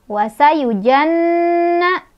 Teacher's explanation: Ada gunnah karena ada nun yang bertasydid. Cara bacanya berdengung.